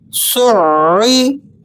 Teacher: عین کو آپ نے تشدید کی وجہ سے بھی سختی سے ادا کرنا ہے اور اس کے مخرج سے بالکل پورا پورا ادا کرنے کے لیے آپ نے عین کو وسط حلق سے یعنی درمیان حلق میں جہاں ابری ہوئی ہڈی ہوتی ہے وہاں سے ذرا اس حرف کو زور لگا کر پڑھا جاتا ہے تاکہ یہ حرف بالکل اپنے مخرج سے پورا پورا ادا ہو جائے۔